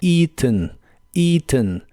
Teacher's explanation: Se pronuncia con un sonido I largo al principio, la A no se pronuncia y la E del final es muy suave.